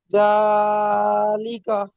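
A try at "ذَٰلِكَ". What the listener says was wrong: মাশাআল্লাহ, খুব সুন্দর পড়েছেন জি।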